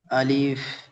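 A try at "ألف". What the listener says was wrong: আলিফ একটু টান হয়ে যাচ্ছে, আলিফ।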